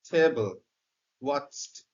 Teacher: টি উচ্চারণ করতে এই জিহ্বাটা কখনোই বাঁকা হবে না, জিহ্বার ডগা, বরং এরকম উচ্চারিত হবে।